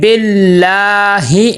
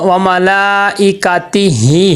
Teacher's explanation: دونوں ہاں میں فرق آپ کو واضح نظر آیا ہوگا کہ ایک ہاں کو نہیں لمبا کیا، ایک ہاں کو لمبا کیا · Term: کھڑی زیر